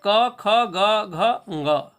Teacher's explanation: कवर्ग का मतलब होता है क ख ग घ ङ, ये 5 वर्ण। ह और विसर्ग, इन सबों का उच्चारण स्थान कंठ है